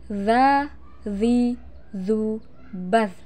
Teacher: Cara melafalkan huruf za dengan menyentuhkan ujung lidah dengan dinding dua gigi seri bagian atas. Suara mengalir dengan lembut tanpa diiringi dengan mengalirnya udara. Perhatikan, za.